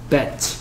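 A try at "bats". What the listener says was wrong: bat 치치 해봐 치치치 아 치가 안 되는구나 혀가 왜 튀어나옵니까 그냥 치 하면 되는데 혀를 꼭 혀가 왜 혀가 그냥 이 한 상태에서 이 뒤쪽을 톡 치면서 치 혀가 왜 밖으로 나와요? 혀가 나오면 안 돼요. 이 한 상태를 해야 되니까 치 bat 그래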